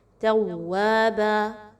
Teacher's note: کانا الف مدہ 1 سے 2 الف کے برابر پڑھیں گے، نون کو لمبا نہیں کرنا، کانا ایسا کرنا درست نہیں ہے، بلکہ کانا توابا، تا اور واؤ کو آپس میں مضبوطی کے ساتھ ملائیں گے، واؤ مشدد ہے · الف مدہ آ گیا، واؤ الف زبر وا 1 سے 2 الف کے برابر لمبا کریں گے، اور نیکسٹ با پر 2 زبر کی تنوین ہے تو آپ نے اس کو وقف کرتے ہوئے الف مدہ میں کنورٹ کر دینا ہے۔